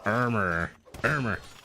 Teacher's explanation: armor is a word that could easily be one syllable